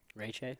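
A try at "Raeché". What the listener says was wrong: Ray Shay. Yeah, people want to make it Che, but it's Shay. It's not Che. It's it's Shay. And it has an accent over the E.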